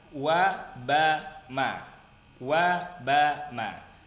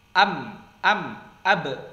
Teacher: Huruf mim dan ba dengan menempelkan dua bibir.